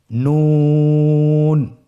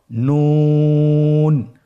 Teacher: নুন হরফটি উচ্চারণের ক্ষেত্রে অবশ্যই পাতলা করে উচ্চারণ করতে হবে এবং 3 আলিফ টেনে পড়তে হবে।